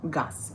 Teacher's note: Et ça se prononce avec S à la fin aussi. Ça s'assourdit.